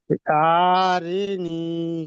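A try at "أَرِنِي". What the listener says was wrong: আ টান হবে না, হারাকাত টান হয় না জি। হামজা জবর আ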